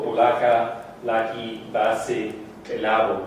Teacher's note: the cut words all come out with a rather than with o